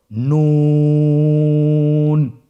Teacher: নুন হরফটির উচ্চারণ স্থান হচ্ছে জিহ্বার আগা তার বরাবর উপরে তালুর সঙ্গে লাগিয়ে উচ্চারিত হয়।